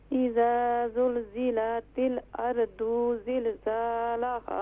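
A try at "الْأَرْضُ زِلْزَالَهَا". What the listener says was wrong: اب اردو نہیں ہوگا، یہاں پر ضاد کے اوپر صرف ضمہ پیش ہے تو اسے شارٹ ساؤنڈ کریں گے، ارض زلزالها،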